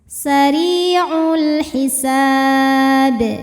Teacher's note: alif lam menghadapi huruf qamariyah yaitu ha, maka lam sukun dibaca jelas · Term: alif lam qamariyah